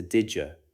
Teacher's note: Did you often blends into didja?